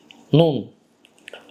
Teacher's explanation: Və beşinci məxrəc isə nun hərfinin məxrəciddir. Bu da dilin ucu ilə qarşısındakı iki ön üst dişlərin ətlərinə vurmaqla